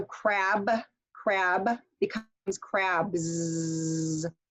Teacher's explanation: if I have a voiced sound at the end, then my sound is going to sound like a Z. It's going to be voiced.